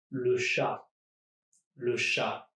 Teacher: the CH is just pronounced like a sh, and not a ch